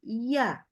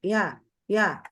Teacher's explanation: kalau ya itu benar-benar harus sampai naik lidahnya